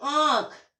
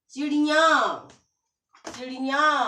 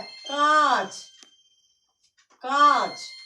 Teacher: गले में से भी और नाक में से भी। तो जहां पर गले में से और नाक में से, दोनों में से आवाज आए, तो वहां पर चांद बिंदु लगता है, यानी कि अनुनासिक।